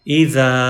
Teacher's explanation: ہو تو الف کو ایز مدہ، ایز لانگ واول پڑھیں گے، تو اب زال کو ہم لمبا کریں گے الف مدہ کی وجہ سے